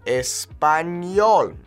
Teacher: The Ñe is kind of like an N and a Y put together